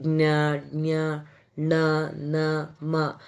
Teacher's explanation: ಮೂಗಿನ ಸಹಾಯದಿಂದ ಉಚ್ಚರಿಸುವ ಅಕ್ಷರ ಅನುನಾಸಿಕಾಕ್ಷರ, ಅನುನಾಸಿಕ ಅಂತ ಕರೀತಾರೆ